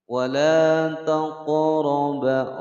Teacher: ada qaf sukun, maka dipantulkan membacanya, namanya qalqalah sughra karena berada di tengah-tengah kalimat